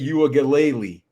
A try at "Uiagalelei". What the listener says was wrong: I think it's Uiagalelei, but, I mean, hey, that's good. That's close. I think the G is silent.